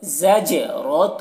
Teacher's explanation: دیکھیے زا اور جیم دونوں کی آواز میں فرق ہو، زج، اور جیم میں قلقلہ بھی ہو رہا ہے، یعنی جیم کی آواز ڈبل نکل رہی ہے ، زجرۃ، رو کو موٹا کر کے، اور تو یہاں پر